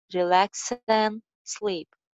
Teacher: Relax and X ki jo ending sound hai wo N ke saath mil jayegi